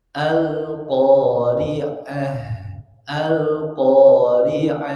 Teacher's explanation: alirkan suara nafasnya karena H itu termasuk bagian dari H yang mengalir nafas, rokhawah